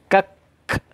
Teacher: Syiddah dulu, tertahannya suara kita baru hamas.